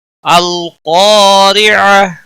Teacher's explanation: را کے نیچے زیر ہے، باریک پڑھیں گے، کھولتا ہا ساکن بن جائے گا، وقف بالابدال ہوگا۔